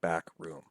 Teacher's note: And then another one is the spondee, and that's a pair of syllables making up a foot where they are both basically equally stressed